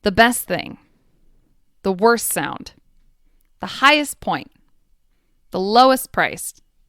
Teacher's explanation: superlatives have an st at the end but not all and that final T will often disappear